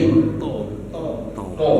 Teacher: Ujung lidah temu sama ujung pangkal gigi seri.